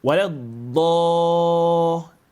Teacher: Now, وَلَضَّالِّينَ. The mad you apply here must maintain the same heaviness you start from the dad.